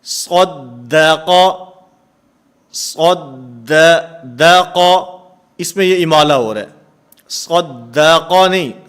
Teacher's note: موٹا، موٹا حرف پڑھیں گے اس کو پر ادا کر کے، باریک حرف کو باریک کرتے ہوئے اس میں امالہ ہو جاتا ہے، فتح کسرہ کی طرف مائل ہو جاتا ہے